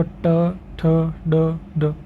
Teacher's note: अपनी जीभ का जो टकराना होता है वो मूर्धा की ओर होता है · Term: मूर्धन्य